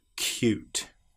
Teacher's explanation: What often happens here is we get the sound of the y before the vowel and after the very first consonant. Hence, cute. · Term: the ooh sound